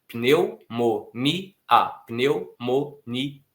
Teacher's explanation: Então, nós não temos, nesse ponto da palavra, semivogais. Nós temos um hiato. O I fica numa sílaba, o A fica em outra.